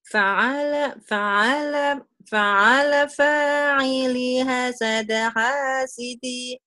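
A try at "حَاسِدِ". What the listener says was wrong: Iya, cuman li-nya basi kepanjangan. Fa'ala fa'ili hasada hasidi.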